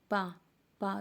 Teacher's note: आप तालब औष्ठ बोलो, पा, पा, दोनों ओंठ आपके बंद हो जाएंगे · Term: ओष्ठ व्यंजन